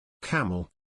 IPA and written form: ˈkæm.əl (Camel)